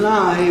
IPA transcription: l.aɪ